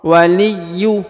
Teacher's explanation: huruf ya ditahan dan ditekan 2 harokat karena di sini terdapat tanda tasdid ya